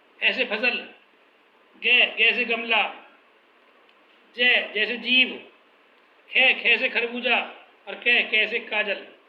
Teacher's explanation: इन ध्वनियों का उच्चारण वर्गीय ध्वनियों के अनुसार होता है, परंतु इनमें घर्षण अधिक करना पड़ता है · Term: विदेशी ध्वनियाँ